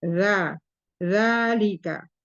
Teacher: Kemudian sifat huruf za yaitu rohwa, jahar, dia tertahan udara atau napas, kemudian tapi mengalir suara, za, makanya rohwa, kemudian tidak ditebal karena istifal. Jadi pangkal lidah tidak naik